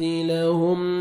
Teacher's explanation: میم ساکن کا اظہار ہے, جلدی پڑھیں گے